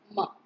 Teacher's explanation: Mo is a voiced, bilabial, nasal because place of articulation is two lips, manner of articulation is through the nose, vocal cords vibrate